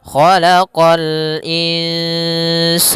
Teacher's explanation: Kha isti'la, huruf kha pangkal lidah kita terangkat. Khalaqa sama qa juga huruf isti'la pangkal lidah terangkat.